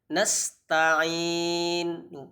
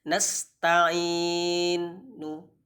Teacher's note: Nasta'in cukup 2 tapi dimoncongkan mulutnya. Nasta'in. Jadi mengucapkan nu tapi hanya setengah harokat.